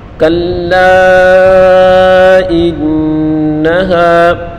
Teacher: نون مشدد ہے، اس کو غنہ کے ساتھ پڑھیں گے۔